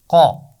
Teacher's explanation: زبان کی جڑ اور اوپر کا تالو، ان کو ملا کر قاف کی آواز ادا کی جاتی ہے، لیکن کاف کے مقابلے میں قاف کی آواز موٹی ہے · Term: موٹی آواز